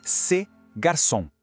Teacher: A pronúncia é bem curtinha, bem fechada, quase um estalo.